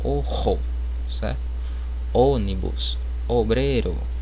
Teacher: Então o O a gente pronuncia de forma mais fechada, pessoal.